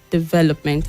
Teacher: the stresses on the second syllable